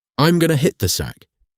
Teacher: For the rhythm hack, going to becomes gonna. Then, drop the volume on the word the slightly. So, it sounds like a small sound dynamic.